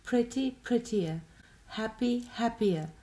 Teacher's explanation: Notate che la mia pronuncia praticamente non include questo suono r.